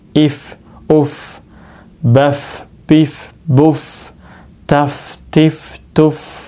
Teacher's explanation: gigi seri kita yang atas ini nempel ke bibir bawah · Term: fa